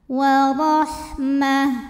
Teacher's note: Huruf ra dibunyikan secara tafkhim sebab ra berbaris fathah. Maka dibacanya tebal.